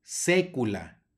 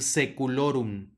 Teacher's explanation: luego tenemos una ae que va a sonar como e